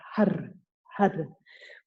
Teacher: When we chant Har, the tip of the tongue flicks the roof of the mouth. So you want to feel that, and it's the Afrikaans R with the rolling R, Har, Har.